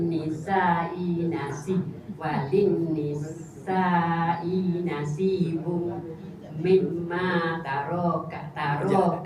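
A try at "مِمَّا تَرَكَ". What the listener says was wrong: Jangan kalau nak jangan kata taruh sebab lepas pada ra tu tak ada alif. Kalau nak baca banyak mimma taroka lah tu. Bukan ni kena panjang sebab ada alif. Alif kecil tu.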